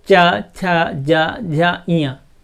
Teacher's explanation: तालु में टच होने के कारण इन व्यंजनों को, इन ध्वनियों को तालव्य कहा जाता है